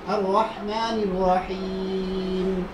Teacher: নুন উচ্চারিত হবে জিহ্বার আগা, তার বরাবর উপরে তার সঙ্গে লাগাইয়া। আর র উচ্চারিত হবে জিহ্বার আগার উল্টা পিঠ, তার বরাবর উপরে তার সঙ্গে লাগাইয়া র।